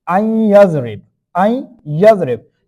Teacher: Okay, 4 letter of your mulun, if there is come after Noon Saakin and Tanween, we'll do the Ghunna in there. Okay, we'll merge, like we're blending the sound, we'll get the sound in the nose. · After Noon Saakin, there is an Ya. Now we are merging the Noon sound in the Ya, like we are getting the sound silently, we are holding the sound in the nose, we are making the compressity on the Noon. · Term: Idgham with Ghunna